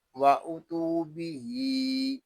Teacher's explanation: آگے جو الف ہے یہ زائد ہے، اس الف کو نہیں پڑھیں گے۔ با کو بھی ایک الف تک کھینچ کر پڑھیں گے کیونکہ یہاں کھڑا زیر ہے · یہاں تا کو ہم ایک الف تک کھینچ کر پڑھیں گے کیونکہ یہاں واو مدہ ہو رہا ہے۔ آگے جو الف ہے یہ زائد ہے، اس الف کو نہیں پڑھیں گے۔